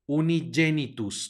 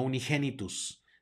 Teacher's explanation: tenemos una G seguida una e va a sonar como y